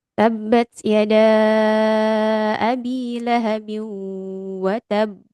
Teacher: Jadi bnya agak ditekan di tasdid ya karena ada ba yang bertasydid kemudian dia berhenti wakaf. Watab.